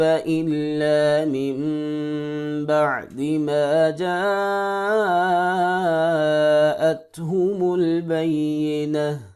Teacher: ساتھ نہیں، کیونکہ نون ساکن کے بعد با رہی ہے تو یہاں پر اقلاب ہوگا، یعنی کہ نون کو میم کے ساتھ بدل کے پڑھیں گے · تا وقف کی صورت میں تا ہا میں بدل جائے گی ساکن میں